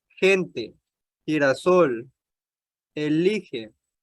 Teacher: Se pronuncia con un sonido fuerte similar al de la J, delante de la E y de la I